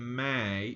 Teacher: you're you can feel your nose shaking a little bit so if you hold your nose and you say May you should feel your nose vibrate a little bit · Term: slight nasal sound